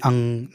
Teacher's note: अंग में देखो अ भी उच्चरित हो रहा है और नासिक की ध्वनि भी आ रही, अंग नाक से, है ना, नाक से ध्वनि भी उच्चरित हो रही है।